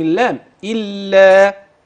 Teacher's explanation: حتى الان كلها مرققه ما غلظت حاش لم افخم اللام